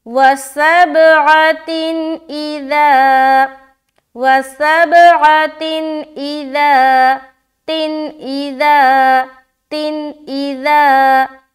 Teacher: حمزہ آ رہا، تو یہاں پر ہم اظہار کریں گے، یعنی کہ نون کی آواز ظاہر کرتے ہوئے نکل جائیں گے، رکنا بالکل بھی نہیں ہے